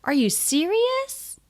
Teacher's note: so again a question and the pitch is really high